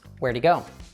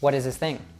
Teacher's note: We drop the h or we drop the th in the case of them.